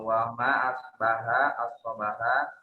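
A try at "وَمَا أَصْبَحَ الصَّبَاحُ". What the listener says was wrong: Asbaha as-sabah. Wa ma asbaha as-sabahu, bukan sabaha.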